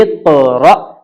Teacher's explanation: سانس رک جائے، ایسا جھٹکا ہونا چاہیے